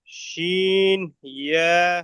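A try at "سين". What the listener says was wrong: শিন নয়, শিন নয়, সিন। যে সিনের উপরে কোনো নক্তা নেই সেটার আওয়াজ হবে সিন। সিটির মতো আওয়াজ হবে। আর যে সিনের উপরে নক্তা থাকবে, এরকম তিনটে নক্তা থাকবে, সেটা হলো শিন। শিন। এটা হলো সিন, সিটির মতো আওয়াজ।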